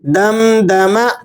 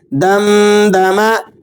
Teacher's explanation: میم پر آپ نے غنہ آنی ادا کرنا ہے، غنہ زمانی ادا نہیں کرنا. غنہ آنی کا مطلب ہوتا ہے آنن فانن ادا ہونے والا غنہ، جلدی سے دم دما.